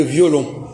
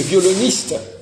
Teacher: Mais dans le violoniste, il n'y a plus le on.